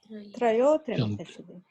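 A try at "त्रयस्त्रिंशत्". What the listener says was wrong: Trayas Trimshat. Trayas Trimshat. The Visarga Trayaha Sa Visarga becomes Sa. Trayas Trimshat. It is Visarga Sandhi. Trayas Trimshat.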